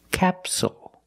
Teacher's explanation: the stress is on the first syllable, so the second syllable is short. It's not capsule, it's capsule with a dark L at the end.